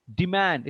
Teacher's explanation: Demand. Stress is on man.